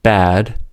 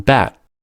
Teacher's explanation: the vowel in bad is much longer than the vowel in bat. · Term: Prefortis clipping